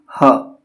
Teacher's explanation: तो जिन वर्णों के उच्चारण में मुख खुला रहता है, यानी कि मुंह जो है वो खुला रहता है तथा वायु कंठ को खोलकर झटके से बाहर आती है। वायु जो है कंठ को खोलकर झटके से बाहर आएगी। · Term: काकल्य वर्ण